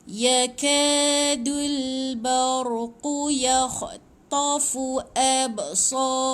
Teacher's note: mati dengan ba ada bunyi pantulan sikit. So ada alif kecil panjang 2 harakat, lepas tu rohum, rohum.